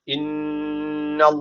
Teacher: ediyorum inne derken şeddeli nun var mutlaka bir Elif miktar tutuyoruz Allah lafzı burada kalın okunacak neden kalın okunuyor Çünkü öncesindeki harf üstten bağlanıyor Yani öncesi harfin harekesi üstte Eee burada bir Elif tutma var